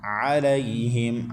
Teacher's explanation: عین حلق کے درمیان سے، اس کے بعد لام کے بعد یا ساکن، اس سے پہلے لام کے اوپر زبر، تو یا لین ہے تو اس کو بغیر کھینچے پڑھنا ہے.